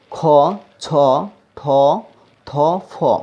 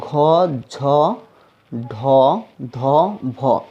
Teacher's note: এই দশটি বর্ণ হচ্ছে মহাপ্রাণ বর্ণ কারণ এগুলো বলার সময় মুখের বেশি শ্বাস নেয়ার প্রয়োজন পড়ে